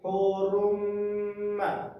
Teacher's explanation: Di ro ini terdapat tanda baca yang namanya tanwin, dan tanwin tersebut bertemu dengan huruf mim bertasdid, maka dibaca gunah. Hukumnya adalah idgham di gunah.